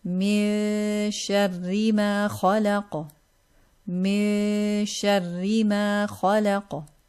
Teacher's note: we hide the noon, get ready to say the sheen, and we prolong it with a gunna. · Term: ikhfa